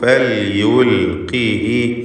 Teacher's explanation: ഖാഫിന് കുറഞ്ഞ തഫ്ഖീമാണ് കസ്റായതുകൊണ്ട്